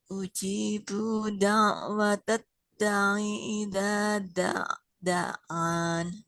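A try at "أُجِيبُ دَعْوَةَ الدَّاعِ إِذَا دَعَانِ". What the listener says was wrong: Nah, mbaknya juga sama nggak panjang. Ujibu da'wata da'i idza da'an. Tapi di sini tadi huruf ain jangan nggak ya.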